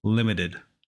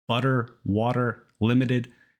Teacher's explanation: it's really fast I'm not saying limited it's more like a really fast D